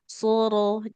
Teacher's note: Jadi so dengan ro-nya sama-sama tebal karena huruf ro-nya sendiri dia berharokat fathah. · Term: huruf tebal